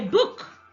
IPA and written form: bʊk (book)